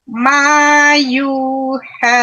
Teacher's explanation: U-nya itu ada waw menjadi mat. Sama dengan ma panjangnya.